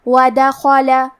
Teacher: کلمت ودخل میں دال پہ، خا پہ اور لام پہ تینوں پہ زبر ہے، تو ہم یہ تینوں زبر کو برابر سے ادا کریں گے. اور خا کی ادائیگی حلق کے اوپر والی حصے سے ہے، خا حروف تفخیم میں سے بھی ہے، تو ہمیں یہ حرف کو موٹی آواز میں پڑھنا ہے. ودخل.